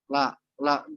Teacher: lam ini ujung lidah ketemu atau menyentuh langit-langit depan